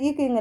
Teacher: நாவோட முதல் பகுதி இருக்குல அது அண்ணத்தோட அடிப்பகுதியை பொருந்துவதால் டச் பண்றதுனால அது பிறக்குது